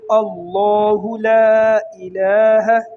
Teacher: لفظ اللہ کو لوگ باریک پڑھتے ہیں۔ یہ باریک نہیں ہے بلکہ اس کو پر پڑھیں گے